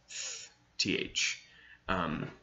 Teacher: There's even a kind of rare sound in English, which is the dental fricative, and you use it every day, and it's just th.